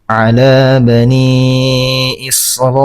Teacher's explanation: cara membacanya dibaca 4 sampai 5 harakat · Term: mad wajib muttasil